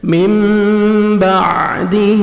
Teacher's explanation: من بعدہ نون ساکن اور تنوین کے بعد جب با آتا ہے تو نون کے تنوین کو نون ساکن اور تنوین کے نون کو میم میں چینج کرتے ہیں, جس کو اقلاب بولتے ہیں, اور اخفاء کرتے ہیں. نوز میں ساؤنڈ لے کے جائیں گے. من بعدہ عین کو اپنے صحیح مخرج سے ادا کریں گے.